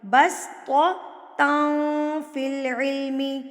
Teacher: تنوین کے بعد حروف اقفا میں سے فا, تو تنوین کی آواز کو چھپا لیں گے.